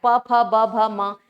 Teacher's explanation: वैसे ही प जो है वो होठ होठ से आता है ना? ओष्ठ है। ये हमारे होंठ से आ रहा है।